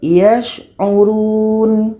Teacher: Kita alirkan suaranya itu namanya rakhawah.